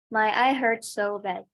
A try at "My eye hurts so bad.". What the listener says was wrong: Yes, that's it.